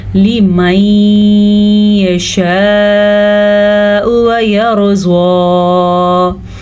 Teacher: اچھا جی، نون ساکن کے بعد یمون میں سے یا آیا ہوا ہے تو یہاں بھی ادغام بالغنہ کا قاعدہ ہوگا. ہم غنہ بھی کریں گے اور یہاں پہ ناک کی جڑ سے جو آواز آئے گی اس پہ ہم دھیان دیں گے.